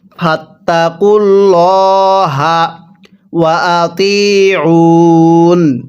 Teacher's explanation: আল্লাহ শব্দের লামের পূর্বে পেশ থাকলে অবশ্যই আল্লাহ শব্দের লামটাকে মোটা করে পড়তে হয়